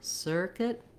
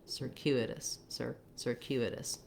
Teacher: we still have our sir beginning, just like we have in circuit, but in circuitous, it's going to go by more quickly. It's the unstressed because it's in an unstressed syllable.